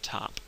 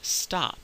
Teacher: there's an aspiration after the T in the word top. But interestingly, not in the word stop.